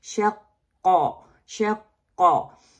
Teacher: make sure to keep back of tongue elevated to avoid resembling the letter kaf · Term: qaf